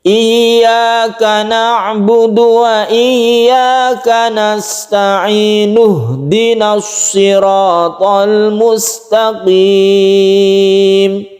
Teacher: kita ingin meneruskan ayat yang keenam maka kita membacanya nasta'inu ini dibaca satu Alif saja Kemudian kalau kita teruskan berarti Nun nya itu dibaca domah langsung